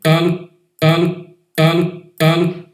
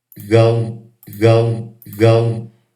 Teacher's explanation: Ele a gente chama de velarizado. O fato de ser recuado o U na região velar velariza fortemente o L.